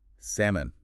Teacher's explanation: That L is totally silent. No sound at all. None. It's not salmon.